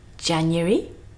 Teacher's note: 3 syllables and a kind of y with a schwa sound in the middle